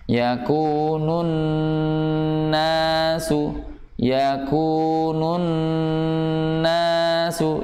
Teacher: Ya, ini apalagi tingkatan gunahnya gunah yang sempurna, karena sebab nun yang beretas itu bukan hanya sempurna tapi paling sempurna, sehingga dibacanya dengan gunah yang panjang